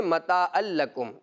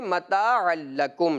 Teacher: تو یہ عین جو ہے وسط حلق سے ادا ہوتا ہے، اس کا بھی خاص خیال رکھنا ہے۔